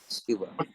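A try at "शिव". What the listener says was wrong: Shiva, short I. So, often people when they chant, they say it's Shiva, but it's really closer to Shiva. So, short I, just like right there.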